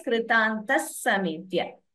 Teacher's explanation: So visarga followed by sa. Instead of the visarga, we chant two sas. So the visarga gets replaced by sa.